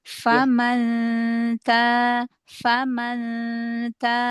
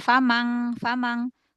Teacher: Nah ini nun ketemu tak ya, berarti ikhfanya yang akrob ya, karena huruf tak paling dekat makhrajnya dengan nun ya. Jadi dari depan biar tipis.